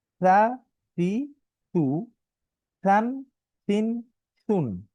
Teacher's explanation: যখন আমি উ বলবো আমার ঠোট কিন্তু গোল হতে হবে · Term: উকার